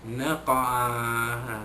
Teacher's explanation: qaf mati, dilantunkan bunyinya lemah, sama seperti perkataan-perkataan hujung ayat sebelumnya, iaitu qalqalah sughra.